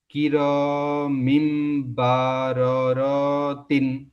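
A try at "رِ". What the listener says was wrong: এই যে র টান হয়ে যাচ্ছে, হারাকাতে পড়াকে তাড়াতাড়ি পড়তে হবে, টান দেওয়া নিষেধ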